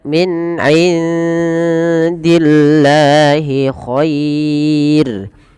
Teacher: Dan rnya ini tidak boleh ditebalkan tapi dibaca dengan tipis dan kita namakan dengan ro tarqiq. Khair bukan khairu enggak, tapi dia tipis.